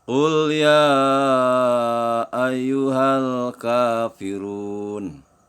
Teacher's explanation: Di sini kul ya, ya-nya panjang ya, 5 ketukan. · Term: mad wajib mutasil